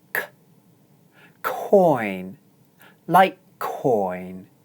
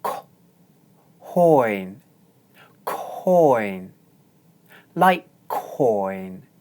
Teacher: The consonant sound at the beginning of the second syllable is k. This is an aspirated sound, meaning you need to exhale strongly.